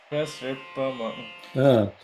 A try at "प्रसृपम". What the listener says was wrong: Prasrupamotsrupa. No holding on the sru because it is a vowel. The ra dot below, the r with the dot below is a vowel.